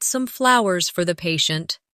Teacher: Stress flowers to show the gesture.